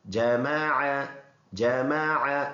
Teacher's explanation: یہ عین کو صاف کر کے گلے سے ادا کریں گے